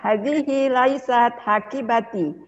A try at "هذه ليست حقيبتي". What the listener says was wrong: Mumtaz.